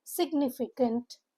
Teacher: Four syllable word stresses on the second syllable. Nif pronunciation guide is significant c to k sound.